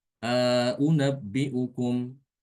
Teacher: A'unabbi'ukum ditambahkan panjang sedikit alif. Dua harokat ya. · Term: idkhal